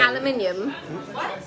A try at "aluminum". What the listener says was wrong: Guys, you're adding extra letters to the word. It's aluminum. That's extra letters, yeah.